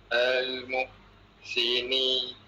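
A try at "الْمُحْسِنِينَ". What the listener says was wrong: Panjang sikit ni tu. Okey, lepas ni tu huruf apa? Nun fathah jadi? Na berapa harakat? Satu. Okey, ambil kat al, berarti kat na.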